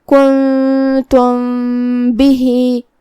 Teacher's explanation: कुन्तुम آخر میں میم ساکن ہے، پھر حرف الباء آتا ہے کلمت بہی میں، یہاں حکم ہے اخفاء شفوی، تو ہم میم کو چھپاتے ہوئے لیکن غنہ کے ساتھ یہ حکم کو ادا کریں گے